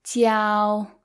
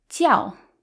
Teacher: it becomes the first tone which is tiao it's higher pitched tiao versus when it means religion it's the fourth tone it sounds more Angry